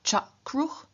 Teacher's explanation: root final vocalic r changes into consonantal r, and so for example of kr, we have the third person plural active form cha-kruch, where cha is the reduplicative syllable, kr is the root in 0 grade.